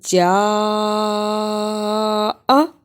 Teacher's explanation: جاء، جیم زبر مد، جا، حمزہ زبر آ، جاء، یہاں جیم کو اس لیے لمبا کیا، یہ مد 5 بند انگلیاں باری باری کھولیں اتنا لمبا کرنا ہے